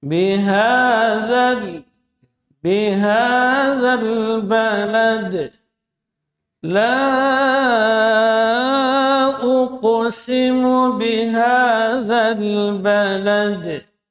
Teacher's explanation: Ha keluar di pangkal tenggorokan.